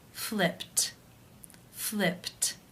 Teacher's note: the final sound of the verb is p which is unvoiced therefore it is case one and the ed is pronounced as a t